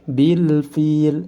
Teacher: lamnya harus dibaca jelas karena dihukumi izhar qamariyah